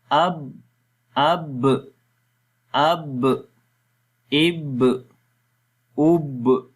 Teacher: حمزہ با زبر اب، حمزہ با زیر اب، حمزہ با پیش اب، اب، اب، اب، ٹھیک ہے۔ تو جب اب کریں گے تو ہونٹ آپس میں ملیں گے، یعنی کہ ہونٹوں کا تر حصہ، اور جب ہونٹوں کو چھوڑیں گے تو کلکلا ہو جائے گا۔